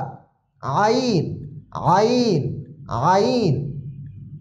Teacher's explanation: আইন একটু গলার ভিতর থেকে চাপ দিয়ে উচ্চারণ হবে।